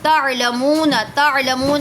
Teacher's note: منہ پہ واو مدہ ہو رہا ہے، واو ساکن سے پہلے پیش ہے